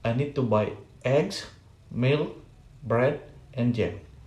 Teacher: intonation pattern is a intonation pattern in list in list its item in the list is often pronounced with the rising intonation and the end of item has a falling intonation or combine rise and falling intonation this pattern help the signal